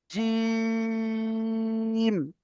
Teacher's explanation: একটু বেশি টান দিয়ে বলতে হবে তিন আলিফ পরিমাণ